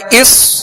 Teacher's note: صاد میں سیٹی کی آواز پیدا ہوگی اور صاد کو پر پڑھیں گے